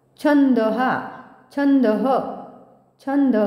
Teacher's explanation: छ ला आघात द्यायचा आहे पुन्हा कारण पुढे जोडा अक्षर आहे